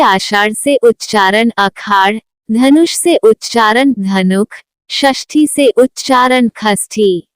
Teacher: मूर्धन्य श से ख होना